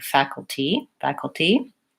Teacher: maybe a tiny schwa but again almost no vowel that goal I almost go right from the K to the L